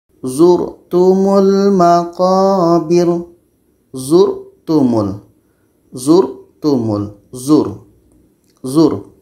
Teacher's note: surah attakatur ayat 2 ini huruf r matinya sebelumnya berbaris depan R mati sebelumnya ada huruf yang berbaris di depan ini dibaca dengan tebal